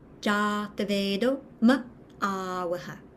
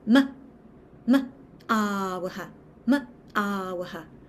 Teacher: I almost use diaphragmatic engagement to add a little like beat of emphasis to the ah of awaha. So it Oh, goes from, and I also try to embrace like a slight yawny feeling on those longer A's.